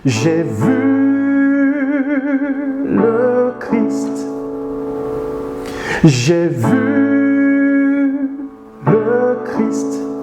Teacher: Et donc, il aura mis l'accent sur le fait de voir.